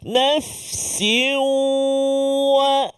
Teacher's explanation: Juga idgham ma'al ghunnah. Dengung 2 harakat.